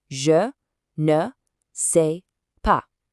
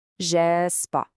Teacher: These je ne just melts into je. We went from 4 syllables down to 2.